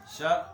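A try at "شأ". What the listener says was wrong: بھائی پورا تو شا حمزہ سخت کرو. آگے ہو کے دیکھو شا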